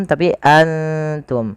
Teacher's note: keduanya dibaca dengan bacaan ikhfa, yaitu samarkan langsung kepada huruf ta-nya. Maka tidak dibaca dengan antum tapi antum, langsung kepada makhraj daripada huruf ta-nya.